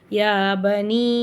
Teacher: பெரிய மத்து கிடையாது சின்ன மத்து தான் இது வந்து மத்தே முன்பஸில் அதனால மூணுல இருந்து நாலு அலிஃப் வரைக்கும் நம்ம நீட்டி ஓதினா போதும்